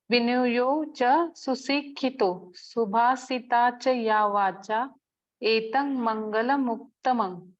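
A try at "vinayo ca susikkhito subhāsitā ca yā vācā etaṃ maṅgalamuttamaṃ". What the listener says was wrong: Probably you may consider some of the H letters to a little bit more, but just fine.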